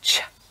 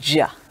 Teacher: the other is unvoiced just blowing air out of our mouth so unvoiced is ch and voiced is ja